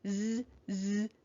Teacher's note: the letter s is making its voiced sound it's going z z in this word